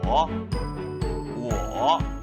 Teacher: with a third tone okay go down